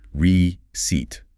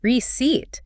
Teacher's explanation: The first part is a soft re. The C sounds exactly like an S, and the EI combination stretches out into a long E sound.